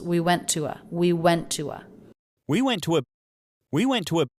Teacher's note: But instead it's we went to a. So by keeping an oo vowel and then putting a schwa at the end, we keep the feeling of two different words of two different syllables.